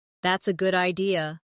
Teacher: Notice how their voice rises at the end. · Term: intonation